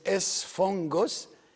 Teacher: the first gamma is followed by another gamma. So the first one is pronounced an N